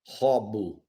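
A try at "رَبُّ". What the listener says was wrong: It's not kha, right? You said it. Rabbu. Yeah, and then this one is rabbu, rabbu.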